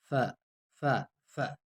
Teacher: یہ ف ایسے زیادہ زور نہیں، ف ہنٹوں سے ادا ہوتا ہے